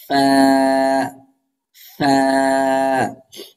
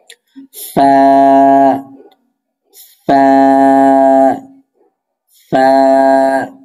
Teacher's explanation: নিচের ঠোঁটের পেট সামনে উপরে ২ দাঁতের আগার সঙ্গে লাগাইয়া ফা, হাতে বাতাস জারি থাকবে।